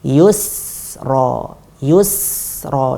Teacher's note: Jadi tips agar tetap tipis dibalikkan. Ketika ya tersebut dhammah monyong, kita majukan mulutnya, kemudian ketika sukun kita balikkan. Yusra, yusra.